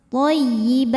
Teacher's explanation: Belakangnya taknya jangan ketinggalan anginnya ya, hamesnya.